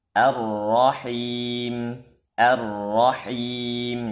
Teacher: sampai diayunkan fathah pada ra sehingga dia akan melahirkan Alif nah jangan sampai panjang harakatnya satu harakat saja